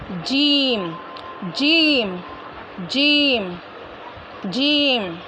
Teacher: ज़बान की बीच और उसके मुकाबिल ऊपर के तालू से अदा होता है